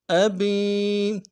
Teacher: اس یا مدہ کو کھینچنا ہے ایک الف کی مقدار میں